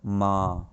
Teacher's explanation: इसके उच्चारण से मुंह और नाक दोनों से वायु निकलती है इसका चिन्ह चंद्र बिंदु है जैसे मां हां यह आंदोलन में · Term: अनुनासिक